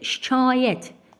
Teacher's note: Şikayət sözündə A uzanır